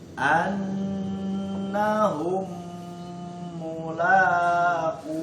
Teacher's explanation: la-nya panjang 2 harokat, ku-nya panjang 2 harokat